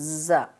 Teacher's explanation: سین اور زا میں سیٹی کی سی آواز آنی چاہیے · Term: سیٹی والے حروف